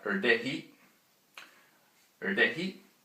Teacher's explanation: the voiced retroflex stop, which is like a D sound with the tongue curled back